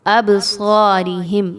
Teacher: با پر جزم ہے، یاد رکھیے با حروف قلقلہ میں سے ہے، یہاں پر اس کو ہلا کے پڑھا جائے گا